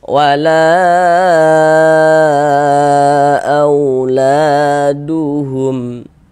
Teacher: Walaupun ada juga yang membacanya itu dengan dua harakat. Jadi kita panjangkan 4 sampai dengan 5 harakat. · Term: mad jaiz munfasil